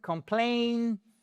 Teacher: The stress is on the second syllable